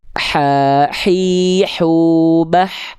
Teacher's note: Kalau hak kecil dia deket jakun · Nafasnya, karakternya lebih lembut. Sering kita sebut karakternya berbisik.